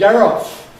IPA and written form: ˈger ˈɒf (get off)